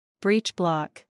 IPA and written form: ˈbritʃˌblɒk (Breechblock)